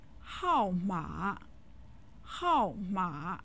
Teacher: 号码 with the second and third tones, meaning number